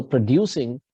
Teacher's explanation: So producing, you're putting an accent on the second syllable, right?